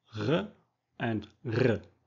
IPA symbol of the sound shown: ʁ ʀ